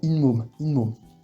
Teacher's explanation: Le T à la fin de la première syllabe va se transformer en N.